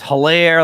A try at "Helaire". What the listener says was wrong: It's Elair. The H is silent.